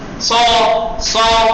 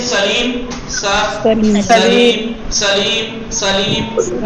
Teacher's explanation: صاد کا مخرج وہی سین کا والا مخرج ہے، فقط صاد میں ہوا منہ جو ہے وہ پرحجم ہوگا، سخت ہوگا. سو سیٹی کی آواز نہیں آنی چاہیے.